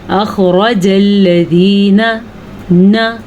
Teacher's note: نون زبر نا نہیں ہوتا، نون زبر نہ ہوتا ہے